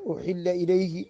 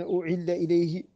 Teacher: وهي عبارة عن جعل الحاء عينا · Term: فحفحة هذيل